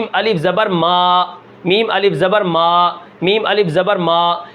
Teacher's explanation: ناک میں آواز نہیں جانی چاہیے، الف کی آواز ہمیشہ ہوا پر تمام ہوتی ہے